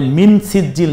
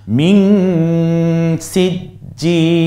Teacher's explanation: নাকের মধ্যে নিয়ে গুনগুন আওয়াজে পড়তে হয় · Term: ইকফা